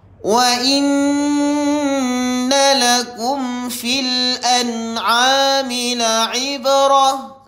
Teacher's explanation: Mim mati bertemu dengan fa. Maka dibaca dengan jelas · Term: izhar syafawi